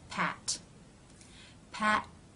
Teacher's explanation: the tongue will come up and the front part will touch the roof of the mouth just behind the top teeth it will then pull down to release the air the teeth · these consonants are stop consonants which means there are two parts first a stop of the airflow and second a release